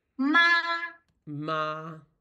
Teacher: So you have to lower the first tone a little bit. The first tone, lower a little bit.